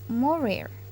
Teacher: It occurs in final position and it is voiced uvular approximant.